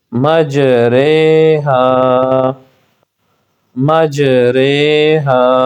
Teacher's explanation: امالہ کی را کو اردو کے لفظ قطرے کی را کی طرح پڑھیں، یعنی ری نہیں بلکہ رے پڑھیں۔